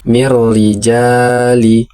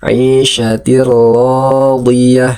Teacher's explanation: apabila nun mati atau tanwin bertemu dengan huruf ro maka dibaca melebur ke huruf ro-nya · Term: idgham